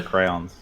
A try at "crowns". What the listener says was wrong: You just 2 syllables.